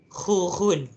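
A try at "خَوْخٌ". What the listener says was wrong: Jangan lebih-lebih khu dia tu. Nanti keluar habis segala benda yang ada dalam kongkong tu.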